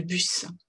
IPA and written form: bʌs (bus)